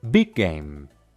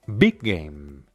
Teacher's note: en vez de separar las palabras simplemente alargamos la consonante un poco